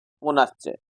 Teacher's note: पुनः धन च पुनः में अंत में है विसर्ग और उसके बाद च ठीक है तो विसर्ग का हो जाएगा तालव्यश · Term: विसर्ग संधि